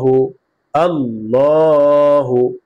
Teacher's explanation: আল্লাহ শব্দের লামের পূর্বে জবর অথবা যদি পেশ আসে তাহলে আল্লাহ শব্দের লামকে কি করে পড়তে হবে পুর করে পড়তে হবে অর্থাৎ মোটা করে পড়তে হবে · আল্লাহ শব্দ লামকে মোটা করে পড়েছি · এই যে আল্লাহ শব্দ আমি লিখেছি, হামজা লাম জবর আল, লাম কারা জবর ল, আল্লাহ, হা পেশ হু, আল্লাহু, আল্লাহু। আল্লাহ শব্দের লামকে মোটা করে পড়েছি